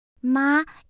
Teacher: The fourth tone falls sharply. It's short and strong like when you say no.